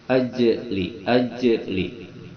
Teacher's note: Dalam jim ini ada sifat jim qalqalah, dia pantulkan, memantul. Sifat jim itu kalau disukunkan memantul.